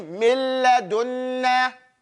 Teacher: There is no gunna in that pronunciation of that first noon. In fact, the noon is completely gone. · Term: idgham without gunna